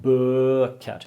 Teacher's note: So books, and the long ø, like really long bøker.